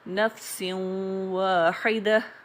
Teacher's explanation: واؤ کو ادا کرتے ہوئے وقت بھی نون کی خوشبو شامل ہے، تو یہ بھی ادغام ناقص ہی کہلائے گا.